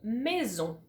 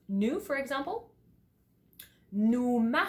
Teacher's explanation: it's almost like you're humming okay the vibration is kind of like on your face in your mouth etcetera but you still keep your lips open a little bit